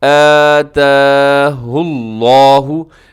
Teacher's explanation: ان آتا نون ساکن ہے، نون ساکن کے بعد حمزہ ہے، یہاں پہ اظہار حلقی ہوگا